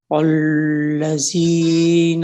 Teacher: اچھا, یہاں پہ لام آپ نے الذین میں لام جو تھا وہ موٹا ادا ہو گیا آپ سے